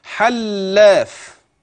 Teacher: اللام مشدده وليس فيها غنه ولكن يجب ان تراعي التشديد اثناء النطق